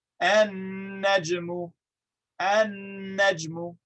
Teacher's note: We skip pronouncing the lam entirely. Why? Because look at how close the lam and the nun are to each other.